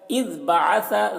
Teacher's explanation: ذال میں قلقلہ نہ ہونے پر اس کا خیال رکھنا ہے